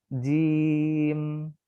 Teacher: jim itu tidak mengalir sama sekali, tapi dia tawasud di tengah-tengah.